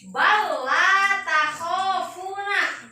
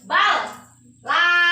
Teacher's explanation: Aya lam dua anu kahiji pae anu kaduana hirup. Idgomkeun asupkeun lam anu kahiji kana lam anu kadua. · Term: idgham